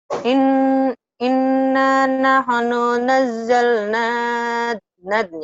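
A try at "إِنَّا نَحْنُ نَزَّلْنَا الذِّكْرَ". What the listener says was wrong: Nah, ini jadi ya nyambung ya, nazal nadzikra. Innya ini tak ditahan. Inna gitu, gunnah.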